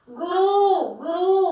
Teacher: गुरु में बड़ा ऊ नहीं आएगा, छोटा ऊ आएगा